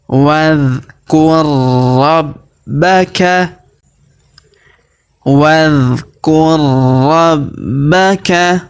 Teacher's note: Kemudian huruf ro yang berharokat sukun bertemu huruf ro yang berharokat tasdid, maka huruf ro yang berharokat sukun melebur masuk ke huruf ro yang berharokat tasdid ya. Kita tahan dan kita tekan.